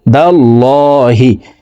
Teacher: আইন এখানে ইকফা গুন্না, নুন সাকিনের পরে ইকফার 15টি হরফের ভিতরে একটি হরফ দাল আসছে, এই কারণে নুন সাকিনকে নাকের ভিতরে লুকাইয়া গুন্নার সহিত পড়ব।